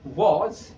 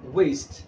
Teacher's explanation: दोनों होंठ मिल रहे हैं, आवाज निकल रही है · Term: bilabial